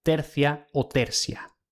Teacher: la secuencia ti seguida de otra vocal se pronuncia como ci. Tertia sería tercia o tercia.